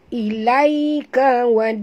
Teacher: Kalau kita berhenti, boleh panjang. Tapi kalau kita wasal, sambung, tak boleh langsung panjang. Satu harakat sahaja. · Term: ya lin